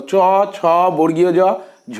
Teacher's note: চ বর্গের প্রতিটি বর্ণকে বলা হয় তালব্য বর্ণ